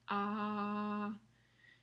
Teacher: Pasando a la a, que es la tercera vocal, la lengua está en una posición baja en la boca. Ah, casi no se levanta para nada.